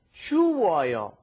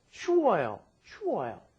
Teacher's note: the vowels get combined into a double vowel